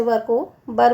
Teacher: व के स्थान पर ब का प्रयोग होता है